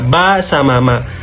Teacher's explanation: Bibir yaitu bibir bawah aktif sedangkan bibir atas pasif. Nah, contohnya kayak terkatup atau bertemu antara bibir bawah dan bibir atas